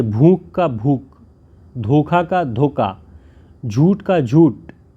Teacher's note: किया जाता है यानी थोड़ा उ दीर्घ कम हो जाती है महाप्राण ध्वनियों की महाप्राण दब जाती है वे अल्प प्राण के रूप में सुनाई देते हैं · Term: महाप्राणता दब जाती है